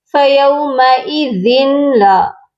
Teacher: کیونکہ جب بھی تنوین کے بعد حروف یرملون کے دو حروف لام اور را آتے ہیں تو غنہ نہیں کیا جاتا، آواز کو ناک میں نہیں لے کر جاتے، بلکہ بلا غنہ ملا کر ہم پڑھتے ہیں۔ اس قاعدے کو کہتے ہیں ادغام بلا غنہ، یعنی ہم صرف ملاتے ہیں۔